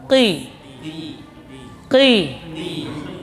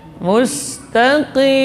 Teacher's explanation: Pangkal lidah menempel pada langit-langit yang lunak. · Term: qaf